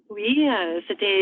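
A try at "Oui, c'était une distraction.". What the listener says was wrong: I know that you're pushing from the throat. Push from the chest. Lips forward. Don't move the mouth.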